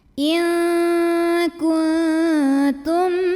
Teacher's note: Karena ada mim sukun ketemu mim yang berharokat, maka cara bacanya mim pertama dileburkan ke mim kedua masuk disertai bunyi dengung, bunyi M-nya tahan. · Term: idgham mimi